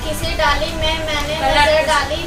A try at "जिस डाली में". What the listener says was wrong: जिस डाली में, किसी डाली में नहीं, जिस डाली में। जिस डाली में। गलत है, गलत हो चुका है मैडम।